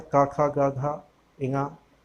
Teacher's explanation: कंठ ध्वनियाँ का खा गा घा इंगा, ये आपकी 5 होती हैं